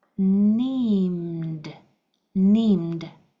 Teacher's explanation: Here we have an ED, that follows a voiced sound, so it's going to sound like a D. So we have N, E, M, D.